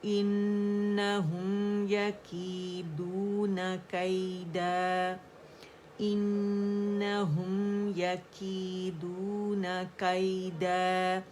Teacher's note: تنوین، ٹھیک ہے، 2 کاؤنٹ کے لیے آواز اوپر جائے گی، الف مد طبیعی حرکتین یہاں پہ ہمارے پاس بن رہا ہے، ٹھیک ہے، آواز 2 کاؤنٹ کے لیے اوپر جائے گی